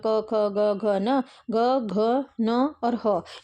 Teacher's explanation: है कि आपके जो है वो क कंठ में आता है कंठ से उच्चारित होने वाली ध्वनि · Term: कंठे ध्वनि